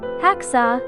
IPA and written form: ˈhæksɔː (Hacksaw)